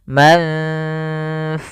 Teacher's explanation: jangan dibaca mangfus semua, tapi langsung ke makhraj daripada huruf fa-nya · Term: ikhfa